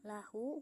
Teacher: Lahu, hukum tajwidnya adalah mad silah qasyiro karena ha domir didahului huruf hidup dan tidak bertemu hamzah, dibaca panjang dua harokat